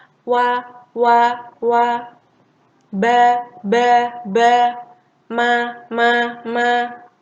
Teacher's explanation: Ada yang terbuka dan ada yang tertutup. Waw itu terbuka, ba dan mim itu tertutup